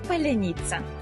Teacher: Бо в російській вимові немає м'якого звука ц наприкінці слова